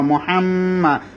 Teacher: মিম তাশদি সেজন্য গুন্না হবে